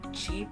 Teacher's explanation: like [Music] an n sound sounds like okay for the affricatives a combination of stop and fricative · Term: affricates